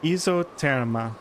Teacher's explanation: And the S in ISO is pronounced like it's a Z.